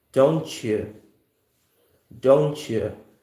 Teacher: T plus Y consonant blend combination yields the ch sound here.